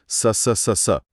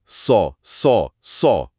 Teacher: सौद की आवाज सुने जो कि भारी भी है और सिटी वाला भी